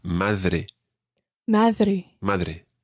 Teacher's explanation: it's almost like the th in the word the in english but it's not quite as soft as that if you if you say rather than d then you're nearer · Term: spanish d sound